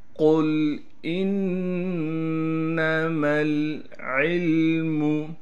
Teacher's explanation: قاف کو لام سے ملائیں گے، قاف کو موٹا کر کے پڑھیں گے